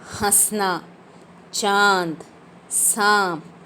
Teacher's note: इसका उच्चारण करते समय हवा जो है वो मुख और नाक दोनों से निकलती है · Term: अनुनासिक